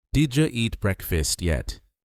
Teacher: Did you became didja. Breakfast lost the second syllable. Breakfast. This is normal in fast English.